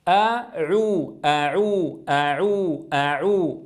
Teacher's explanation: إذن لابد من فتح الفم عند الهمزة، ثم أضم الشفتين عند العين المضمومة